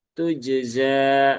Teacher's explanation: ini jim yang sukun juga ada qalqalahnya